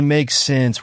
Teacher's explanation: say make sense with the rising intonation